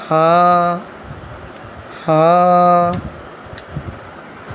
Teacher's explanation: यह हलक के नीचे वाले हिस्से से अदा होता है। यानी हलक के लास्ट पोर्शन से अदा होता है। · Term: मोटी हा